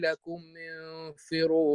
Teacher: هذه همزه وصل في الدرج يعني في الوصل ننقل لها ضمه الميم قبلها وليست همزه قطع